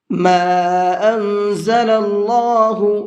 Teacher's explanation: یہ چھوٹا مد ہے تو اس کو 1 سے 3 الف کے برابر کھینچ کر کے پڑھیں گے